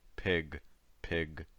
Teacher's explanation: voice final sounds. Occasionally they sound a little voiceless.